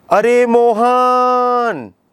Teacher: तो जो मोहन जो वर्ण खींचा गया है इसको प्लुत कहते हैं।